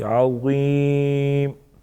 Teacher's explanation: अज़ीम ग़ा नरम पढ़ेंगे और पुर पढ़ेंगे, मोटा पढ़ेंगे। याई मद्दा एक अलिफ के बराबर खींचेंगे